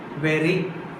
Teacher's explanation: Only one time is touching this tip of the tongue to the teeth ridge. Okay, so that's why here this ra sound is called flop.